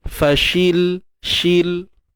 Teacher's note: Matikan lam tanpa ada tawallud.